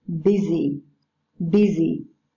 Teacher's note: with a voiced alveolar fricative sound. This consonant's weaker than the first one.